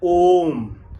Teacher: प्लुत स्वर आएगा, क्योंकि इसमें 3 मात्राएं होती हैं।